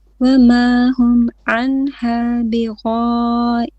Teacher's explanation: غائبين here mad 4 or 5 beats.